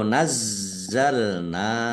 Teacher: Nazzalna nun fathah alif mad thobi'i panjang dua harakat